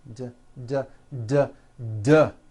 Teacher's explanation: TTT it's unvoiced your vocal cords are not vibrating TT now don't change a thing with your mouth just take the same sound and add voicing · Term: paired consonants